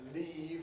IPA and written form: liːv (leave)